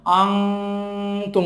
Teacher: নুনটা নাকের বাঁশিতে চলে যাবে। যেমন আনতুম আছে, এখানে স্পষ্ট করে বলা যাবে না, তাহলে ইজার হয়ে যাবে, এই জন্য আনতুম বলতে হবে, নাকে চলে যাচ্ছে গুন্নাটা। · মিন ক্বাবলু, মিন ক্বাবলু, নুন সাকিনের পরে কফ আসছে, এই নুনটা নাকের বাঁশিতে চলে যাচ্ছে, গোপন হয়ে যাচ্ছে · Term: ইখফা